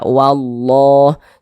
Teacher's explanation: lafaz Allahnya dibaca tafkhim dibaca tebal huruf lam yang di tengahnya ini huruf lam jalalah namanya nah